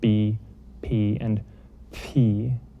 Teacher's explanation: all of these are what are called labials, and so they're made with your lips